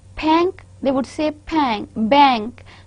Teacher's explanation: So, we know that in Arabic in Urdu we have the pa sound. But in Arabic, we do not have this pa sound